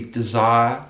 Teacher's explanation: So you can hear that kind of squashing of three vowel sounds into one vowel sound.